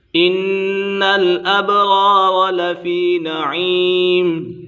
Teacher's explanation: ان الابرار لفی نعیم، نون مشدد ہے، نون مشدد میں ہمیشہ غنہ ہوتا ہے